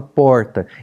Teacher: meu R não é trinado meu R é retroflexo